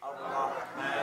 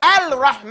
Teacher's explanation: there's a lam right there, but we don't pronounce it